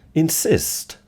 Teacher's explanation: The n sound is voiced, and the I sound is voiced, because it's a vowel. But the S stays as s.